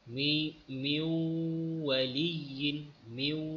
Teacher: nun dimasukkan ke dalam waw